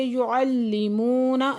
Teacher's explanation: یعلمون لام مشدد ہے، سختی سے پڑھیں گے